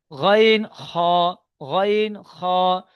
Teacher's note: হালাকের বা কণ্ঠনালীর শেষ ভাগ হইতে উচ্চারিত হয় গইন, খ। শেষ ভাগ অর্থাৎ এই একদম গলার এইখান থেকে শুরু, যেখান থেকে আমাদের মুখের শেষ, গলার এই নিচের থেকে শেষ।